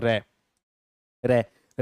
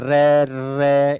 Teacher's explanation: र का उच्चारण करते समय कंपन होता है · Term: लुंठित वर्ण